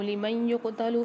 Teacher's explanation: لِمَن يُقْتَلُ میں نون ساکن کے بعد یا مشدد آ رہی تو یہاں ادغام مال غنہ والا قاعدہ ہوگا، غنہ کر کے پڑھیں گے۔